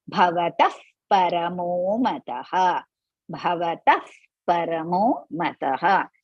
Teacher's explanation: So in Sanskrit, after Bhavataha, after Taha, Visarga, Pa comes. So there we are going to put half Fa, F, Fa.